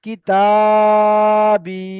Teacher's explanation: তাহলে এই দুটো টানাবে, আলিফ মাদ্দা ইয়া মাদ্দা টানাবে, কিতাবি। দুটো সমান টান করতে হবে। কিতা যতটা টান হবে, বি ততটা টান হবে।